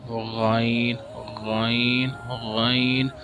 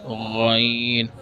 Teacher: تو source of غین is starting of throat. You can read غین from the starting point of your throat.